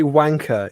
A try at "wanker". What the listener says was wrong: There's no. You just don't have the punch.